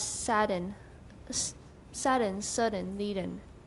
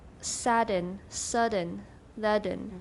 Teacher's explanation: By the lowering of the soft palate, the velum, for the nasal consonant. This phenomenon, known as nasoplosion, is normally used in pronouncing words such as sudden, leaden.